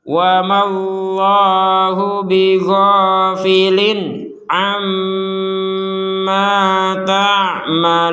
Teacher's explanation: Maka ma-nya ini karena kita berhenti 2 harokat. Nah, kalau kita menggabungkan kepada kata Allah ini, maka dua harokatnya hilang, langsung saja kepada lafal Allah.